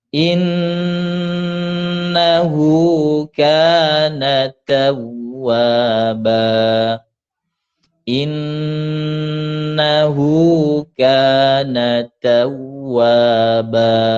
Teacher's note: In ada tasydid didengungkan yang lama. Innahu hu dua harakat.